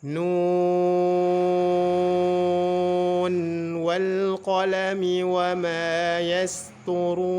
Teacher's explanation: asalnya tiga huruf nun jika teman-teman juga ingin menggunakan cara wasal maka bacaannya harus dibaca izhar dan tetap dibaca enam harakat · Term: izhar riwayah